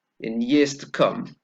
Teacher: notice here that the words that take the stress are come and years